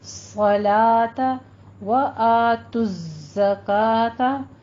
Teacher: صَلَاةَ وَآتُوا الزَّکَاةَ، یہاں پہ آپ نے زائ کے اوپر تشدید ادا کرنی ہے اور زائ کو آواز آپ نے سیٹی کے ساتھ لے کر آنی ہے